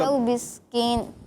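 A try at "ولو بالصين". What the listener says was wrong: کاف آ گیا دوبارہ سے. نہیں بسکین نہیں, سین.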